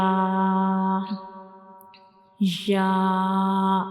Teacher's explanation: So this is the shape of ya, and ya has no dot, and ya is pronounced when we touch the tip of the tongue, when we touch the center of the tongue to the upper hard palate to pronounce ya